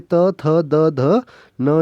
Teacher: जो तवर्ग होता है उसकी सारी ध्वनियाँ कहाँ से निकलती है? दंत से निकलती है। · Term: दंत्य